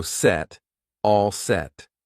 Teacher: notice I don't push out that T